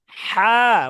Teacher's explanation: হা কোথা থেকে উচ্চারণ করেছি গলার মাঝখান থেকে একটু শক্তি দিয়ে উচ্চারণ করছি